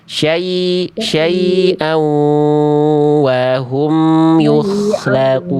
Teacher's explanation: aunya ketika lebur ke wawu kan idgham bigunnah itu dia ditahan dulu